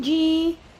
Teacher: یا ساکن سے پہلے زیر ہو تو یہ یائے مدہ ہوتی ہے. اس کو بھی 2 کاؤنٹس تک کھینچیں گے